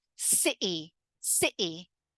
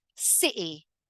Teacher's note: And what happens is your vocal cords actually close up for a moment.